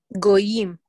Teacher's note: the emphasis is on the second syllable and that's true all the way through hebrew